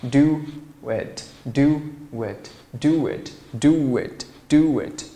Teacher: 长呜音和短呜音，后面加上一个元音标开头单词，一定要中间补上一个▁w